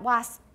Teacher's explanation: 然后呢,整个就封闭了, that's called hold, 留住, wasp, air is under pressure behind my lips. And then I let it out